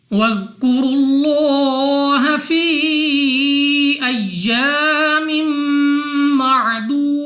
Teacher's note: ذال نرمی سے ادا کریں گے، را کے اوپر پیش، پہلے را کو پڑھنا ہے پر یعنی موٹا، منہ اور آواز کو کھول کر۔ نیکسٹ ہمارے پاس لام آف اللہ سے پہلے حرف کے اوپر پیش ہے، تو اس لام آف اللہ کو موٹا پڑھا جائے گا اپنی منہ اور آواز کو کھول کر۔